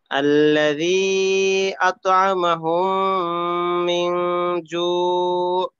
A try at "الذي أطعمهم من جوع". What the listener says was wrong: হুম, শেষে আইনটাকে আরেকটু স্পষ্ট করা, জু, এখানে আইনের উচ্চারণটাকে মনে করেন এইভাবে করতে হবে যেন অন্তত শ্রোতারা ন্যূনতম ভাবে বুঝতে পারে যে এখানে আইনের উচ্চারণটা হইল।